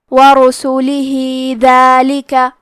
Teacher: کلمت ورسولہ میں را پہ اور سین پہ پیش ہے، تو ہم یہ دونوں پیش کو ظاہر کریں گے اور حرف را کو موٹی آواز میں پڑھیں گے · آخری میں حرف الہا ہے، اگر ہم ہا کو پوری آیت کے ساتھ ملا کے پڑھیں تو کیونکہ اس کے نیچے کھڑی زیر ہے تو یہاں حکم ہے مد صلہ صغرا، تو ہم اپنی آواز 2 مد کے برابر لمبی کریں گے